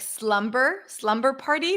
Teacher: when it's within the word like Slumber slumber party the B is pronounced